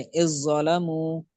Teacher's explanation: جب زال کا ضو میں ادغام ہوا تو اب زال کی صفت برقرار نہیں رہے گی، بلکہ ضو والا ہی ساؤنڈ باقی رہے گا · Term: ادغام تام